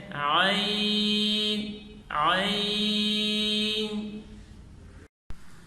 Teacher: صحیح اس کی ادائیگی یہ ہے کہ عین میں وسط حلق سے بغیر آواز دبائے نرمی سے معروف پڑھیں اور مد کر کے پڑھیں